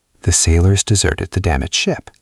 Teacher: Desert can also be a verb meaning to leave someone or something. Then we stress the second syllable.